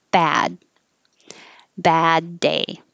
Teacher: the same exact vowel, but ending with a D makes it a little longer.